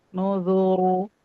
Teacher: Itu pangkal lidah jangan naik pas tipis. Nah, pas tebal pangkal lidahnya naik.